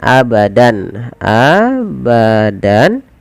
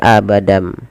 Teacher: Membalikkan suara tanwin atau nun sukun berubah menjadi suara mim. Awalnya pakai n, abadan, abadan berubah menjadi abadam. Nah, langkah kedua menahannya sepanjang 2 harokat. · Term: iklab